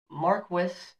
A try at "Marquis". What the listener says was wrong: Marquis. Not Marquis. I think the S is silent. Mm-hmm. Marquis.